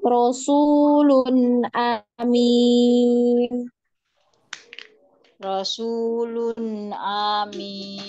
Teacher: A-nya pendek, hamzahnya pendek.